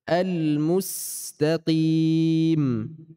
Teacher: Jadi harus dimundurkan bibirnya, bukan al-mus tapi al-mus, sehingga tipis. Ya, dan ada desis, ada sifat sofir namanya, suaranya tajam.